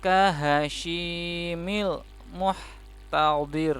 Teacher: khasyi nya panjang dua harakat Mad Thobi'i